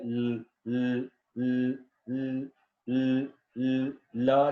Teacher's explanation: वो वाली साउंड्स होती हैं जिसमें आपकी जो हवा है वो आपकी टंग की साइडों से निकलती है, ठीक है। ल ल ल ल ल ल ल जैसे है। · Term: लिक्विड साउंड्स